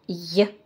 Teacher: буква е обозначает в начале слова два звука первый звук й этот звук согласный звонкий непарный мягкий мягкость мы показываем в транскрипции вот таким знаком похожим на запятую